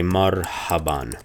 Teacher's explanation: It's a breathy H.